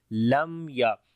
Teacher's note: मीम साकिन के बाद या आ गया तो यहाँ पर इजहार शफवी होगा, मीम की आवाज़ को जाहिर करके पढ़ेंगे · मीम के ऊपर तवस्सुत भी होगा, यानी कि हल्की सी आवाज़ जारी होगी